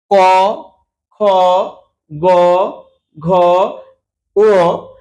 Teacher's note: উচ্চারণ করার সময় আমাদের কোমল তালুতে জীবের পিছন দিকটা ঠেকছে। জীবের যে পিছন অংশটা এই অংশটা জিহার এইযে জিহভা এই জিভার এই অংশটা গিয়ে তালুতে কিন্তু ঠেকছে। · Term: কন্ঠ